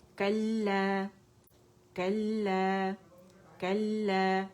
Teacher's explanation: لام مشدد ہے, اس میں پہلا ساکن ہے اور دوسرا متحرک ہے. کلا, اس طرح ہیں.